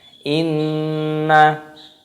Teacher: Ada nun tasdid di sini, hukumnya dibaca gunnah, cara membacanya yaitu didengungkan.